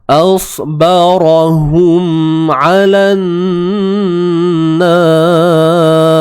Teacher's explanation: 'Alan. Lam terus masuk pada nun. Ni alif lam syamsiah.